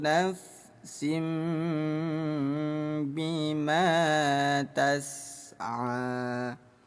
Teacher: Karena cara baca hukum iqlab ya seperti namanya menukar. Jadi bunyi tanwin ditukar menjadi bunyi m yang tadinya nafsin bima menjadi nafsim. Baca samar dan dengung dua ketukan.